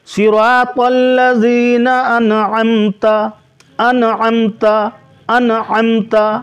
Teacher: اور ام پہ چونکہ یہاں میم ہے ساکن، اس پہ غنہ نہیں ہوگا، اگر میم مشدد ہوتا تو غنہ ہوتا، لہذا آپ یہاں غنہ نہ کریں، انعمتا جلدی پڑھیں، صراط الذين انعمت انعمت انعمت.